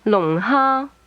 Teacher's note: Is low falling, high level.